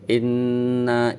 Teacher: bertastid maka suara Nun Nun nya suara Nun nya itu guna-guna itu suara yang keluar dari hidung ukuran panjangnya satu Alif bolehin ditahan dulu dan berdengung Inna Ila lanjut dibaca panjang sebab